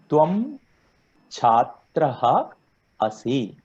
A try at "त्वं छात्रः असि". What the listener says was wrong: Uttamam.